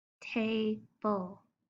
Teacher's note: The word table ends with the schwa, L sound.